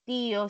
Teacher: De acuerdo a la ubicación de la sílaba, es ti la que tiene mayor fuerza de voz, última y penúltima, por esa razón se vuelve palabra grave.